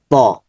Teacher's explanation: জিহ্বার আগা উপরের দাঁতের গোড়া, জিহ্বার আগা উপরের দাঁতের গোড়া তো লাগবে, ওই তায়ের মতো, দালের মতো।